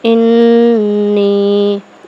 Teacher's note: اور میم مشدد پر ہمیشہ غنہ ہوتا ہے، ٹھیک ہے، انی، اس کو لمبا کر کے پڑھیں گے کیونکہ یہاں پر یا مدہ کا قاعدہ ہے